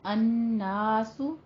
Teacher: ان غنہ واجبہ ہے، نون مشدد ہے، 2 حرکتوں برابر لمبا کر کے پڑھیں گے